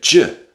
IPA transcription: dʒ